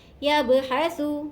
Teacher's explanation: غرابا یبحث، یا کو با سے ملائیں گے، با پہ یہاں قلقلہ ہوگا، با ساکن ہے، با حرف قلقلہ میں سے ہے تو با پر ہم قلقلہ کریں گے